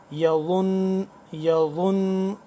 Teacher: ضا کو دانتوں کے سامنے والے دانتوں کے پچھلی طرف زبان کی نوک کو لگائیں گے اوپر والے دانتوں کے ساتھ، تو اس طرح سے صحیح طرح سے ضا ادا ہوگا نرمی کے ساتھ.